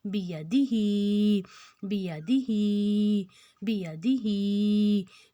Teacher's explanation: बाकी तीनों को हम बराबर खींचें और ही को हम ज्यादा खींचें दो हरकत जितना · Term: खड़ी जेर